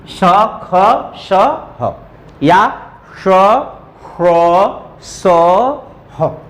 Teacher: जैसे यहां एक चित्र के द्वारा अगर मैं दिखाऊं, ये आपका उच्चारण स्थान है, आपकी जिह्वा इसके इतना नजदीक आ गई, इतना नजदीक आ गई कि जो हवा निकल रही है वो दोनों के बीच से ऐसे रगड़ती हुई निकल रही है, घर्षण करती हुई निकल रही है, तो उसी को कहते हैं ऊष्म व्यंजन। · जो ऊष्म व्यंजन है इसमें घर्षण होती है, रगड़ होती है, संघर्ष होता है